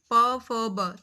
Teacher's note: फिर हम बोल के देखें प फ ब, तो हमारे दोनों होठ जो हैं वो आपस में मिलते हैं, तो ये ओष्ठ कहलाते हैं